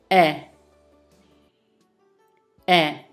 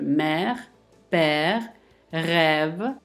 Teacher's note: Le son est se prononce avec la bouche semi-ouverte.